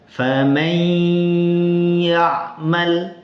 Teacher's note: Bunyi nun sukunnya hilang tapi dengan ghunah atau dengung. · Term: idgham bighunah, idgham bi gunnah